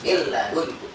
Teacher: idgham bila guna, yaitu dimasukkan dengan tanpa dengung, artinya langsung dibaca, ditekan langsung dibaca